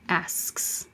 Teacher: Ask is voiceless, so it's the voiceless S. Asks. It's a weird SKS combination.